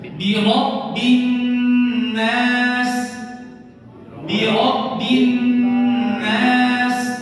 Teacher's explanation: Gunnah pada huruf nun itu ditahan, bukan birabbin nas, dia lebih lama sedikit.